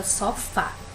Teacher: a palavra sofá qual é a sílaba tônica aqui é o fá